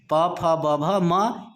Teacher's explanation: प वर्ग के जितने वर्ण होते हैं प, फ, ब, भ, म, इनका उच्चारण स्थान ओष्ठ होता है